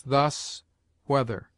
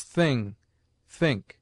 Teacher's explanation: TH has two sounds, the one soft, as thus, whether, the other hard, as thing, think.